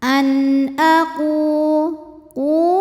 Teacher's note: sebab ada wau sukun didahului harakat damah maka huruf qf panjang dua harakat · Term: Mad Thobi'i